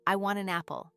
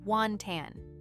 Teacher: The word want ends with the letter T. The word an starts with the vowel A, so the T jumps across and links to the A. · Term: linking